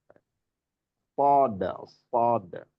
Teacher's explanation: Berdesis atau keluarnya angin dari rongga mulut kita melalui celah-celah. Sod, sod, ya sod itu satu hames.